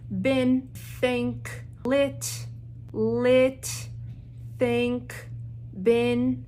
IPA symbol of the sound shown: ɪ